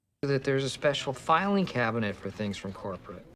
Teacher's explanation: There's a tiny bit of stress on the first syllable of special, and the majority of the stress goes on the words filing cabinet, with the highest pitch on fi. · If we released it, it would sound like there, and we'd lose our reduction and we'd fall out of rhythm too. So make sure you get that stop between the words that and there